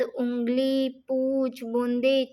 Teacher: अनुनासिक स्वर, चंद्रबिंदु, इन स्वरों को उच्चारण में ध्वनि मुख के साथ साथ नासिका में भी बाहर निकलती है